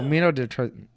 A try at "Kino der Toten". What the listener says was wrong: Kino der Toten. It's a K.